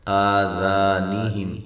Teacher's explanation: ذا الف مدہ ہے، اور ذال کو نرم کرتے ہوئے ادا کریں اور باریک